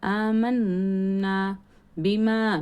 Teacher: மீமில் மத்து இருக்குது, அடுத்த வார்த்தையில் ஹம்சா வந்திருக்கிறதுனால இங்கேயும் மத்து முன்ஃபசில், இங்கேயும் 4 ஹரக்கத் அளவுக்கு நீட்டணும்.